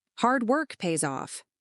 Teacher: the words work and off are stressed